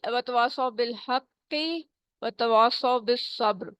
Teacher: اور وتواصوا بالحق وتواصوا بالصبر، اور با پہ کلکلا کریں گے اور را رکتے وقت موٹا اونچا ہو جائے گا